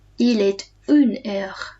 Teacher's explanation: Il est une heure. So I'm saying the T here because the next word starts with a vowel. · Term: liaison